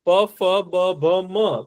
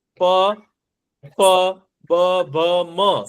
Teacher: પછી હોઠ બે જે અડે ને એ ઓષ્ઠ્ય વ્યંજન કહેવાય.